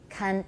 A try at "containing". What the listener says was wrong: 不是康 n 点的 n 肯木头肯 你那个 n 想的不要想 contain。 You're thinking of the n 完全把它忘掉 contain。 Okay, the tay is good 肯不是康是肯